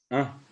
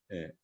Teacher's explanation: fíjense que la A es la A nasal